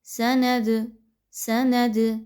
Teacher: दाल को थोड़ा सा हिला कर पढ़ा जा रहा है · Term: कलकला